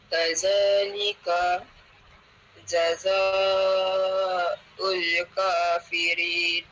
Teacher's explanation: hukumnya mad wajib. Nak baca empat ataupun lima harakat.